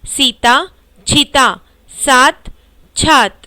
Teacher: इसमें स के स्थान पर छ मिलता है